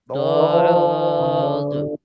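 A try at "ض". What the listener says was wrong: এখনো এক ভাই বলতেছেন তো এরকম চাপ দিয়ে বলতেছেন এরকম যেন না হয় সোজা উপর নিচ করে বদ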